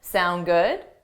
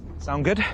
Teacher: you have to add a rising intonation to show it's a question